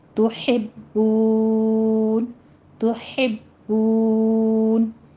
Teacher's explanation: تحبون میں ہا باریک باقی پر تشدید، آگے واو مدہ کے اوپر آپ واو مدہ کے بعد وقف کرنے لگے ہیں، تو یہاں پہ مد عارض وقفی ہوگی، آگے وقف مطلق ہے، وقف کریں گے تو 6 کاؤنٹ کرنا ہے.